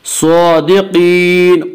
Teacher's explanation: کھڑا زبر کو 1 الف کے برابر کھینچ کر پڑھیں گے۔ صادقین، قاف کو پر پڑھیں گے۔